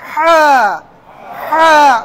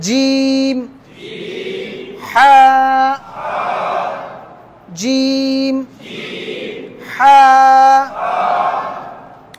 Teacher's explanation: গলার এখানে যে আপনাদের কণ্ঠনালী আছে, এখানে যে রগ টগ আছে, এগুলোকে একটু চাপ দিবেন, গলার মধ্যেই চাপ দিয়ে ওখান থেকে হা হা উচ্চারণ করার চেষ্টা করবেন